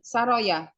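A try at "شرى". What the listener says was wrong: Nah, syar pakai shin ya.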